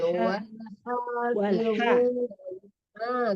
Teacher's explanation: Wal ha itu tengah-tengah tenggorokan, wal wal ha hafizuna gitu.